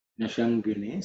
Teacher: the sha is cerebral sha, so the tongue has to be raised up.